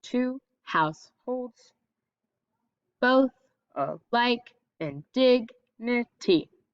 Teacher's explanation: the two because it's unstressed is going to be kind of low just a regular tone two then house your pitch and your emphasis is going to go up a little bit